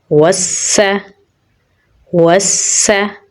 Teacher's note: वाव को सीन के साथ मिलाएंगे क्योंकि सीन के ऊपर तशदीद है। सीन में सिफ़्त सफ़ीर पाई जाती है तो सीटी की आवाज़ आएगी